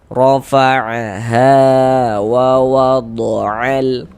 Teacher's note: Maksudnya dibaca izhar itu huruf lamnya itu terbaca, dia ada tanda bacanya, terbaca jelas gitu. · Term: idhar qamari